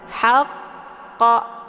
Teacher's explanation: cara bacanya disempurnakan tasydidnya dulu kemudian baru diiringkan dengan pantulan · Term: qalqalah akbar